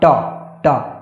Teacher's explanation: जीभ की नोक जो है हल्की सी मुड़कर ऊपर वाले दांतों के पीछे कठोर वाले भाग को स्पर्श करती है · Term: मूर्धा